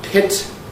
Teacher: it's only the vowel where you have vocal fold vibration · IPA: [pɪt]